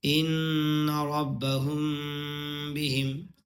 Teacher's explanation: میم کی آواز کو ناک سے ادا کیا، ناک کے اندر لے کر گیا ہے نا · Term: اخفاء شفوی